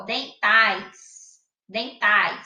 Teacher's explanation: o A, ele tem um som mais forte e o I tem um som mais fraco. Então, eles têm que ficar juntinhos na mesma sílaba.